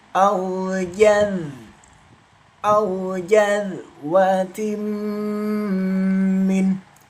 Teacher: Zal sukun dialirkan karena termasuk hukum bacaan rakhawah bukan qalqalah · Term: dzal sukun